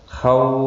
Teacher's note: واو لین ہے، تھوڑا نرمی کے ساتھ کھینچ کر ادا کریں گے